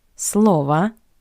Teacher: in the singular, the last o is unstressed. That's why we pronounce it as a